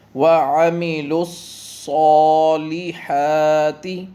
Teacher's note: صا اور حا دونوں کی لمبائی برابر، دونوں کے اوپر کھڑی زبر ہے